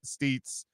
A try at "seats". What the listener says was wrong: You say seats? You said steets. I just wanted to make sure you heard yourself say steets.